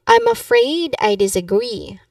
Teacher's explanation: In disagree you emphasize the last syllable too.